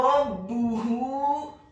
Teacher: Selanjutnya kata rabbuhu, huruf Ra-nya dibaca tafkhim tebal fathah 1 harokat. Huruf B-nya dibaca tipis tarqiq, ditasydidkan ditekankan dhammah 1 harokat, dan huruf H-nya dibaca tafkhim tebal dhammah 4 sampai 6 harokat.